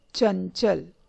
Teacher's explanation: च वर्ग में पंचम वर्ण ञ होता है, इसीलिए उसका उच्चारण ञ से किया जाता है। अनुस्वर का उच्चारण ञ से होता है।